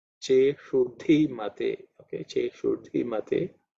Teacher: dhi is the fourth letter in the tha varga, so it has to be aspirated